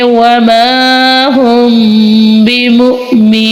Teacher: वमा हुम बिमुमिनीन। जी इधर मीम साकिन के बाद हरूफ बा आने की वजह से इधर हम इदगाम शफावी का कायदा होगा, और इधर भी हम गुन्ना करेंगे। हम पढ़ेंगे वमा हुम बिमुमिनीन।